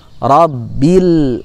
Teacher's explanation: dari kita juga membacanya dengan cara memantul nya Robby Lea rabbil ini tidak boleh dipantulkan karena huruf lam bukan huruf Qalqalah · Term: lam Sakinah